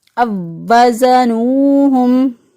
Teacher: وَإِذَا كَالُوهُمْ أَوْ وَزَنُوهُمْ، اب واو ساکن کے بعد دیکھیں پھر واو آ گیا تو واو کا واو میں ادغام کر دیا، اور ادغام کرتے ہوئے ہم پڑھیں گے اس کو اب وزنوہم۔